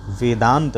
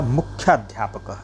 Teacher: इसी तरह मुख्य के अंत में अ है और अध्यापकः के प्रारंभ में अ है, तो दोनों मिलकर के दीर्घ आ बनाएंगे, जिससे बनेगा मुख्याध्यापकः।